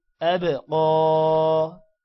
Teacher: قا کھڑی زبر کو بھی ایک الف کے برابر لمبا کرتے ہیں